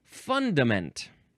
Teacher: Now, the emphasis is on the first syllable.